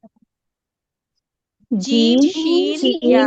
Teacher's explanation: वस्ते लिसान में तो एक ही मखरज है, जबान का दरमियान और तालु का दरमियान। उससे हमारे 3 हुरूफ अदा हो रहे हैं।